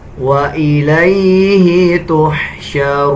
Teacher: جب ہم وقف کریں گے تو نون کا زبر سکپ ہو جائے گا اور نون کی آواز آدھی نکالی جائے گی